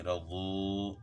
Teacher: ہو جائے گی، رضو۔ تو یہاں کیا ہے، وہ مدہ ہے، واو ساکن سے پہلے پیش ہے تو اس کو لمبا کرنا ہے